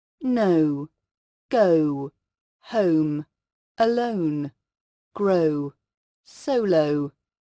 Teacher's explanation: this sound is not a simple o but a combination of two sounds sounding something like om or o no go home alone grow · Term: long o